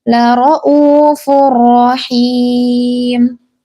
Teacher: Nah, dalam kata lara'uf ini itu adalah mad badal, ya. Jangan dibaca 6 harokat gitu, tapi dibaca 2 harokat. Lara'ufur rahim.